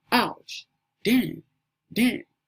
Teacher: the last tone or the fourth tone is the falling tone and is pronounced like damn or ouch.